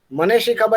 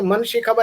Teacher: મને શી ખબર ને બદલે મન શી ખબર એમ તમે કહો ત્યારે અહીંયા એકાર ગળાઈ ગયો છે